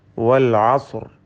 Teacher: ഐൻ പ്രത്യേകം ശ്രദ്ധിക്കുക, ഹൽക്കിയായ ഹർഫാണ്. ഹുറൂഫുൽ ഹൽക്കിൽപ്പെട്ട തൊണ്ടയിൽ നിന്നും ഉത്ഭവിക്കുന്ന അക്ഷരമാണ്. വസത്തുൽ ഹൽഖ്, തൊണ്ടയുടെ മധ്യമാണ് ഐനിൻ്റെ മഖ്റജ്, ഉത്ഭവസ്ഥാനം. · ഇതിൽ വാവിൻ്റെ ഉച്ചാരണം വരുന്നത് രണ്ട് ചുണ്ടുകളിൽ നിന്നാണ്. മറിച്ച് മലയാളത്തിലെ വാ പോലെ താഴെ ചുണ്ടും മേലെ പല്ലുമല്ല. രണ്ട് ചുണ്ടുകൾ ചേർത്ത് വെച്ചുകൊണ്ട് വൽ അസ്ർ എന്ന് ഉച്ചരിക്കേണ്ടതാണ്.